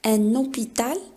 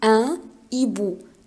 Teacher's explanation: on peut faire la liaison, un hôpital, mais ici, on ne peut pas dire un hibou